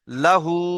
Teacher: দেখেন প্রথমে কি আছে, লাম জাবার লা, তারপরে হা উল্টা পেশ হু। তাহলে লাটা টান হবে না, হুটা টান হবে